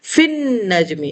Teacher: فی لام کے ساتھ نہیں ملے گا بلکہ یہ نون کے ساتھ ملے گا ، فن نجمی، الف لام دونوں اسکپ ہو گئے۔ اسی طرح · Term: حروف شمسی